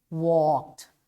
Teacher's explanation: there is ed, but it's pronounced as T